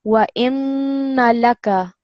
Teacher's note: You're going to hold the noon sound, but you're not going to prolong it.